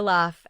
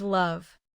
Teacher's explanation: Laugh ends in F with no throat vibration. Love ends in V with vibration. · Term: voiceless